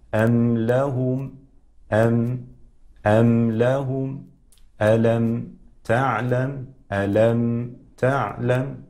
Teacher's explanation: تلاحظ عند خروج الميم يقع إطباق ما بين الشفتين، إطباق خفيف، وهذه هي الصورة، صورة إظهار الميم، صورة إظهار الميم تكون بإطباق الشفتين إطباقا خفيفا.